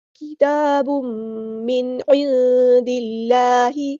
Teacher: حروف ہلکی میں سے عین ہے تو یہاں پہ اظہار ہوگا، نون کی آواز کو ہم ظاہر کریں گے · اصلی کریں گے، با کے اوپر ہے 2 پیش یعنی تنوین، تنوین کے بعد میم آیا تو ادغام مع الغنہ ہوگا